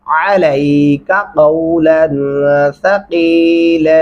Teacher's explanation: अलैका आइन गले से अदा करेंगे और काफ को लंबा नहीं करेंगे।